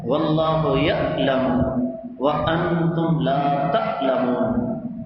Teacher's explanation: حمزہ کے ساتھ عین کو حمزہ میں بدل دیا